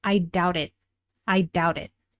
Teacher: That final T at the end is usually stopped, so sometimes it's difficult to tell the difference between I doubt it and I doubted something, like the past tense verb. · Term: connected speech